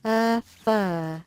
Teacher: For this one, we're going to place our top teeth on the bottom lip and simply blow. There is no voicing in this one, so your vocal cords do not need to vibrate. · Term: f sound